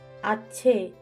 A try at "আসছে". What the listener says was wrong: আরে আবার ছ উচ্চারণ করছেন কেন? বলুন আসছে। আসছে।